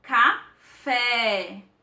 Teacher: prolongar a nossa pronúncia por exemplo a palavra café o café a sílaba que mais se destaca é a sílaba fé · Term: sílaba tônica